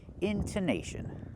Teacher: The stress is on the in, intonation, and the nash. The stress is not on the tone, and we don't pronounce it tone. We say ton, intonation.